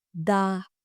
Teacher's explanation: This N sound should be a long sound, or what we call double consonants, which is a long sound.